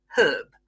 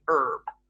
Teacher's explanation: In Britain, we pronounce the H, herb. In America, they don't pronounce the H and they say herb.